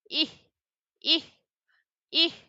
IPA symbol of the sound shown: ɪ